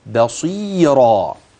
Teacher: الباء ترقق الصاد تفخم حرف المد الطبيعي الياء الراء بعد ذلك تفخم